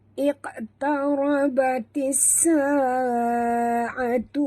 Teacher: Tarabatis, ra tebal, batis masukkan bunyi ta terus ke dalam sin tanpa membunyikan alif lam ya. Di sini nama hukumnya alif lam syamsiah.